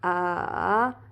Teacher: Third tone, a, you're going from up to down to up.